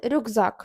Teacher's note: к стоїть біля дзвінкого звука з це значить він теж стає дзвінким перетворюється на Ґ